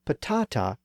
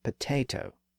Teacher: When patata came into English from Spanish in the early to mid-1500s, the great vowel shift was still underway, and the ah sound was shifting to the a sound within English. So patata experienced the vowel shift and became potato.